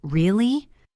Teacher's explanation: with my voice going up at the end, it means I am surprised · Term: intonation